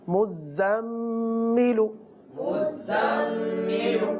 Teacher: مزمل میں اب زا پر بھی تشدید ہے اور میم پر بھی تشدید ہے، تو دونوں زا اور میم دونوں پر رکیں گے ، ایسا نہ ہو کہ مزملو پڑھیں، مزملو تو غلط ہو